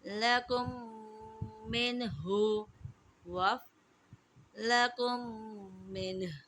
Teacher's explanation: میم ساکن کے بعد دوسری میم آ گئی ہے تو ادغام شفوی ہوگا اور یہاں پر ہم غنہ کریں گے